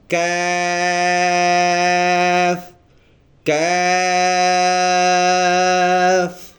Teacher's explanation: کاف میں تھوڑا سا منہ کی طرف، یعنی تالو سے ہٹ کے، گلے سے ہٹ کے تھوڑا سا منہ کی طرف یہ لفظ ادا ہوگا، اور ہم نے اس کو ایک الف کے برابر لمبا کر کے پڑھنا ہے۔